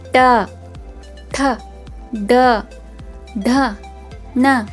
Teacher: ಟ ವರ್ಗದ ಅಕ್ಷರಗಳು ಟ ವರ್ಗದ ಅಕ್ಷರಗಳು ಅಂದಾಗ ಇವು ಮೂರ್ಧ ಭಾಗದಲ್ಲಿ ಅಂದ್ರೆ ನಾಲಿಗೆಯನ್ನು ಹಿಂದೆ ಚಾಚಿ ಬಾಯಿಯ ಮೇಲ್ಭಾಗವನ್ನು ಸ್ಪರ್ಶಿಸಿದಾಗ ಉಚ್ಚಾರಗೊಳ್ಳುವುದರಿಂದ ಇವುಗಳನ್ನ ಮೂರ್ಧನ್ಯ ಅಕ್ಷರಗಳು ಅಂತ ಕರೀತಾರೆ ಟ ವರ್ಗದ ಅಕ್ಷರಗಳು ನಾವು ನಾಲಿಗೆಯನ್ನು ಏನು ಮಾಡ್ತೀವಿ ಸ್ವಲ್ಪ ಹಿಂದೆ ತಗೊಂಡು ಹೋಗಿ